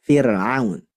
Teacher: ketika sebelumnya ro sukun, sebelumnya ada kasrah, maka dibaca tipis saja. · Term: tarqiq